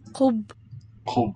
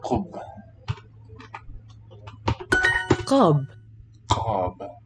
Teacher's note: With a lower tongue than in oo. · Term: oo sound